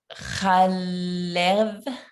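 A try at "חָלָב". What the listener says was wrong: Good, but your first vowel?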